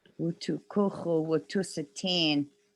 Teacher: the classifier should be a 0, no vowel in the classifier, tu goes long.